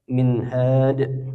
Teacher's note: nun sukun bertemu ha, minhad. Hukumnya izhar, dibaca jelas tanpa dengung